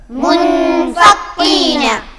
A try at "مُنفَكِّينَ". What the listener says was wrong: چھوٹا کاف ہے، باریک پڑھا جائے گا. منفکین. یہاں پر آپ دیکھ رہے ہیں کہ اس کے اندر دو جگہ جزم والے حروف ہیں، ایک ہے نون اور دوسرا ہے یا.